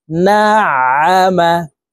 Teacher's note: আইন হরফকে হলকের মধ্যখান থেকে চাপ দিয়ে উচ্চারণ করতে হবে